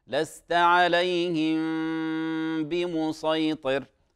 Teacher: هذه فيها إخفاء شفوي، غنته حركتين، غنته حركتين،